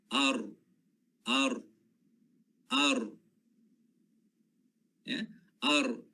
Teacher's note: Di bahagian sebelum sampai hujung lidah tu, di bahagian sini. Dia kena kepada gusi atas. Gusi tempat tumbuh gigi bahagian atas. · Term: huruf ra